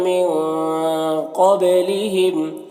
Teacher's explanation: نون میں اخفا ہوگا، نون کی آواز کو ناک میں چھپا کر پڑھیں گے۔ قبلہم، قاف حروف مستعلیہ میں سے پر پڑھیں گے، با میں قلقلہ ہو رہا ہے تو با میں قلقلہ کریں گے، اس طرح سے۔